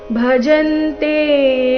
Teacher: ಭಜಂತೆ ಜ ಮೇಲೆ ಆಘಾತ